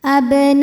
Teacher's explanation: Lam pada lafaz Allah atau lam jalalah dibunyikan secara tafkhim, sebab huruf sebelumnya berbaris dhammah, maka dibacanya tebal.